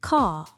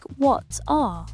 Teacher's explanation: Brits generally don't pronounce the R after a vowel unless it is followed by another vowel.